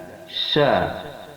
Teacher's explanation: sya mempunyai sifat hamas, ketika diucapkan ada hembusan napas. Yang kedua, sya mempunyai sifat rokhawah, yaitu tidak ditekan akan tetapi dilonggarkan. · makharijul huruf sya berada di tengah lidah. Sya, yang mana sya ini mempunyai 6 sifat.